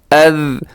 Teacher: سیٹی اس میں قطعاً نہیں آپ نے ڈالنی کیونکہ سیٹی خاصہ ہے زا کا جو نیچے ہے. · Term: ذال